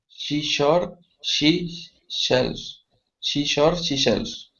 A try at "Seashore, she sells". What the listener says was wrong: Seashore. Sells. I put a SH sound in the middle word. So see, and then she, see, and sells again, right?